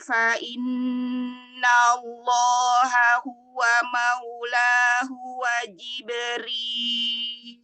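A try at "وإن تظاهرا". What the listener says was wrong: Nah, ikhfanya ya, tanya lebih masuk lagi. Wa in tadhahara. Orangnya juga lebih tafkhim kan lagi.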